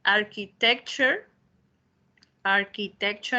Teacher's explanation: cuando vean ustedes la palabra ture, ahí se produce el sonidito cher que tenemos nosotros